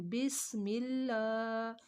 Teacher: یہاں پہ سین ہے تو سین کی سیٹی نکالیں گے